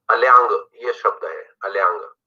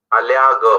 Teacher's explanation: अगर ये चंद्रबिंदी नहीं होती अल्याग हो जाता, और नाक से हमने इसकी आवाज थोड़ी सी निकाली है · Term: अनुनासिकता